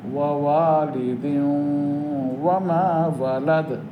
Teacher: ওই যে নুন তানবিনের নুন, ওইটা ওয়ার মধ্যে ঢুকে গেছে। তানবিন অর্থই ঢুকে যাওয়া, এক হয়ে যাওয়া, মিলে যাওয়া।